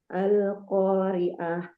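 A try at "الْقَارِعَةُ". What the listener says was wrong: Ya, tajamkan lagi ainnya. Al-Qari'ah. Qari'ah.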